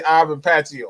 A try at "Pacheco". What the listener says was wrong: It's we're not too far off. You just pronounce that C and we all right. It's Ivan Pacheco. Pacheco.